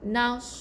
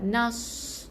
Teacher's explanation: Ada angin, kumpulkan di bawah mulut kita supaya bunyi sad tu tebal. Bukan nas. Bukan huruf S. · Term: huruf sad